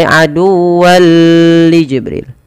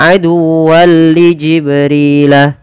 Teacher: idgham bila gunnah itu tidak boleh ada penahanan, tidak boleh aduwwan li Jibril, tapi langsung saja aduwwan li Jibrilah.